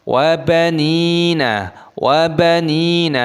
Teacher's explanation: bertemu dengan Waw Idgham Bighunnah dibaca berdengung · nun-nya dibaca panjang ada ya sukunya Mad Thobi'i dua ketukan